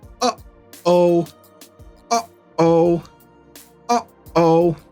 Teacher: You can hear that little pause. What's happening? The vocal cords close. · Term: glottal stop